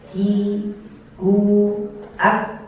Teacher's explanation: Sedangkan kaf dia pangkal lisan dengan di atas anak tekak sedikit maju. Pangkal lisan dengan langit-langit atas.